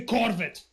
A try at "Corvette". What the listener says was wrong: you you changed you just changed the emphasis you didn't change the pronunciation